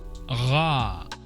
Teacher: it's more like a voiced uvular fricative, Ra, at least in a standard accent of Germany.